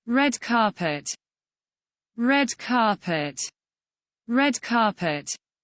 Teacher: R-nya nggak begitu terdengar jelas, terus T-nya itu tekanannya tuh ada S-nya.